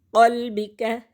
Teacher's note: قاف موٹا پڑھیں گے اور اس کاف کو باریک پڑھیں گے۔